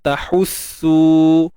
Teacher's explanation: Baik, tahussu habdas, pastikan tengah kerongkong kita sempitkan. Tahussu, su dua harakat mat asli.